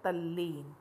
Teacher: त के बाद यदि ल हो तो त ल में बदल जाता है।